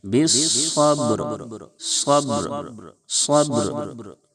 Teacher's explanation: اور با حروف قلقلہ کے 5 حرفوں میں سے ہے، اس لیے با میں آواز لوٹے گی. با ساکن بھی ہے، با میں آواز لوٹائیں گے